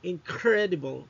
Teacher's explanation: the n sound in assimilates and becomes more like the k sound, incredible, no, making it easier to pronounce. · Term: assimilation